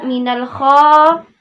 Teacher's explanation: mad tabi'i yaitu minal kha karena fathah bertemu dengan alif maka dibaca dua harokat.